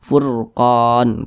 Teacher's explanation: Karena ada huruf ra sukun yang sebelumnya ada tanda baca dhammah. Maka furqan tebal